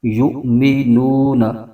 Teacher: یا کے بعد حمزہ ساکنہ ہے تو یہاں پر جھٹکا دے کے پڑھیں گے۔